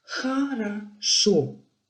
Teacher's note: Donc là où le syllabe est accentué, O se prononce bien comme O. Les deux premières syllabes, O se prononce comme quelque chose d'intermédiaire entre O et A, et la tendance est plutôt vers A.